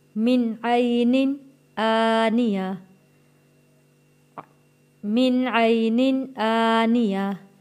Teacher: یہاں نون ساکن ہے، یہاں پہ ہم نے غنہ ادا نہیں کرنا کیونکہ اگلا لفظ حروف ہلکی آ گیا ہے۔